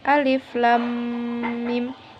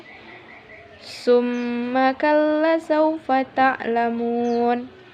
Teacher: huruf mim bertasydid dan cara membacanya ialah dengan didengungkan dan ditahan dua harokat sebelum menyebut jelas huruf mim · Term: ghunnah musyaddadah